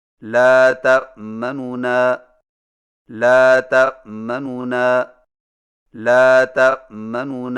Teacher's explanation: دو نونوں سے پڑھیں، لیکن پہلے نون کی پیش کو جلدی سے پڑھیں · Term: اختلاس